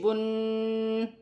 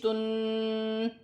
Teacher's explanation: تنوین کو پڑھتے وقت غنہ کرتے ہیں۔ غنہ کے معنی ہیں ناک میں آواز لے جانا۔